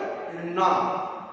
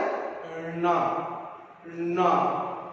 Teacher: நம்ம நாவின் முன்னே மேல்வாய் அன்னத்தின் நடுப்பகுதியை தொடுவதால் பிறக்கின்றன